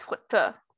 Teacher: They are labialized consonants plus a weak vowel. So something like hu, which is pig, is hu-ta with second syllable stress